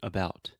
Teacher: It's really About. short, it's really soft. I'm reducing the stress, and I'm putting the stress on the bout. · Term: schwa